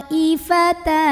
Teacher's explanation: Maka ta-nya ini dipanjangkan, boleh 4, boleh 5 harokat. Yang penting jangan 2. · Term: mad wajib muttasil